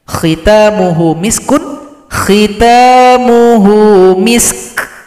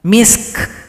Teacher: huruf sukun kedua huruf hamas berikan sifat yang ada angin, suara ada angin.